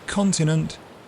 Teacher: The T can turn into a fricative S, and the I can merge with a schwa